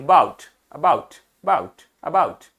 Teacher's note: Linda, Linda spoke टू her, Linda spoke टू her mother, spoke to her mother about a different idea she had, आप ये ध्यान दो कि जब मैं बाउट बोल रहा हूं तो ओ यू का पूरा साउंड है, बट अ में पूरा साउंड नहीं, अबाउट नहीं, बाउट, अबाउट, बाउट, अबाउट, तो हल्का सा साउंड।